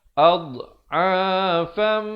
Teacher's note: Tapi jangan berikan pantulan ya. Dot bukannya huruf qalqalah.